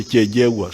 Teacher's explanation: Some of the groups say Kyegegwa, but Banyankwere with their double consonants, they say Kyejegwa